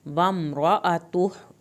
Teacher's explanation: जब ये वम्रअतुहु होगा तो उल्टा पेश खींची जाएगी